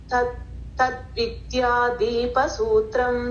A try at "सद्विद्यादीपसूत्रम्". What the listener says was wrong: तद्विद्या तत्तिल्ल सत्विद्या दीप सूत्रम. सत् तत्तिल्ल